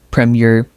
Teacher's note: The first part is strong. The second part is soft and light.